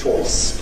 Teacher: ‘Choice’ [ʧɔɪs] becomes [ʧoɪs], with a closer starting point.